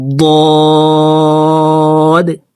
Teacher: আমরা অনেকেই ضاد হরফকে দালের উচ্চারণ করে থাকি, দাল হরফকে পাতলা করে উচ্চারণ করতে হয়, আর এই ضاد হরফকে মোটা করে উচ্চারণ করতে হয়।